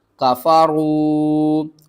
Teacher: واو ساکن سے پہلے پیش ہے، حروف مدہ ہے، 1 الف کے برابر کھینچ کر پڑھیں گے